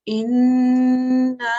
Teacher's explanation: The noon mushaddad in this case, so what happens with when you see a noon with a shadda, which is a noon mushaddad, what we do is we hold the noon mushaddad for an extra second, not too long, just enough for the sound to go into our nose.